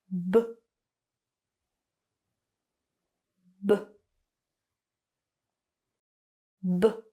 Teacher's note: this B sound is voiced, which means that you're going to use your voice. So when you produce the sound, you are going to feel a vibration in your throat. And what you're going to do is basically push out the air with your lips. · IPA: /b/